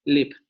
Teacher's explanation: Como una L brillante, una L clara, como nuestra L.